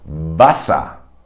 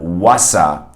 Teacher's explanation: So in words like Wasser in German, where you see a W at the beginning of the word, you have to actually bite your lower lip with your upper teeth. So you go Wasser. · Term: V sound